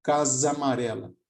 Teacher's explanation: No nível sonoro, por exemplo, na fala é muito comum, em vez de dizer casa amarela, fazermos a fusão desses dois As que estão próximos aqui. Então, em vez de pronunciarmos separadamente os dois As, é comum na fala, principalmente na fala rápida, a gente fazer a fusão, a junção.